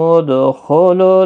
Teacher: دال ساکن پر قلقلہ ہوگا،